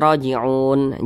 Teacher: panjangnya boleh dua harakat boleh empat harakat hingga 6 harakat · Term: Mad Arid